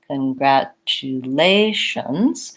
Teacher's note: for congratulations my stress is on the a of lations and so I'm going to go quickly congratulations on the other